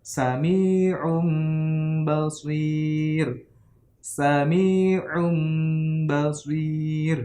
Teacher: Nah, menurut ilmu tajwid, istilah ilmu tajwid, iklab itu membalikan atau mengganti suara non mati atau tanwin ke dalam bunyi huruf mim disertai dengan dengung atau gunnah. Nah, itu terjadi ketika non mati atau tanwin bertemu huruf ba. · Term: iqlab